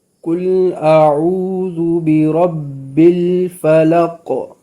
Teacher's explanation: برب میں با 2 دفعہ آ رہا ہے، دونوں دفعہ قلقلہ نہیں ہوگا۔